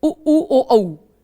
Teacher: अगर ओठ गोलाकार होते हैं किसी स्वर को उच्चारित करते समय तो उसको वृत्त मुखी स्वर कहते हैं और अगर ओठ गोलाकार नहीं होते हैं तो उसको अव्रत मुखी